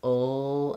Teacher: I can just make it by lifting the back of my tongue into this position, ul, and letting air off the sides. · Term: syllabic L